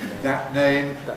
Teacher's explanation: most people by now use a glottal stop in this phrase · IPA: ˌðæʔ ˈneɪm, [ˌðæʔ ˈneɪm]